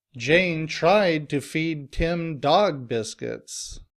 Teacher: here the stress is on tried and dog.